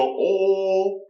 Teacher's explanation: if they were to go oh rather than all, it's much more open